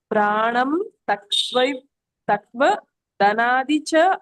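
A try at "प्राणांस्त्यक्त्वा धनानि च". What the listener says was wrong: ನೀವಲ್ಲಿ ಗಮನಿಸಿ, ಆ ಉಚ್ಚಾರಣೆ ಮಾಡ್ತಾ ಇಲ್ಲ. ಆ ಬರುತ್ತೆ ಸ್ವರ. ಪ್ರಾಣ ಹೇಳ್ಬೇಕಲ್ಲ, ಅಲ್ಲಿ ಪ್ರಾಣಂ ತ್ಯಕ್ವ ಅಂತ ಹೇಳ್ತಾ ಇದ್ದೀರಾ. ಪ್ರಾಣಾಂ ತ್ಯಕ್ವ ಧನಾನಿ ಪ್ರಾಣಾಂ ಪ್ರಾಣಾಂ ತ್ಯಕ್ವ ಧನಾನಿ ಚ ಧನಾನಿ ಚ.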